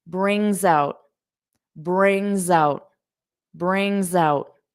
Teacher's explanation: So notice that S, we'll hear it as a voiced sound to link these two words together.